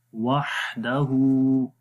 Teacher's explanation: वहदहु सिफ्ते रखावत भी है, वाह आवाज़ भी जारी हो रही है। वहदहु, हा को लंबा करेंगे, उसके ऊपर उल्टा पेश है, उल्टा पेश को भी 1 सेकंड लंबा करते हैं।